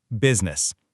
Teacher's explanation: We say it with just two syllables, business. The I in the middle is completely gone.